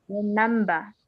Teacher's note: In British English, the R is not pronounced. So in the example, like the word remember, in British English, it's pronounced remember.